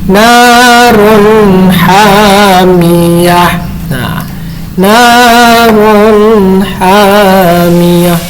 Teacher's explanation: Jadi dibacanya tidak dengung, tidak samar. Harus jelas ya. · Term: idhar